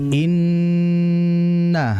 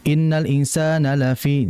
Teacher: dengungan yaitu melewati hidung. Makanya disebut dengan al-khayshum, yaitu huruf yang bersifat gunnah melewati hidung, bukan sini. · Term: ghunnah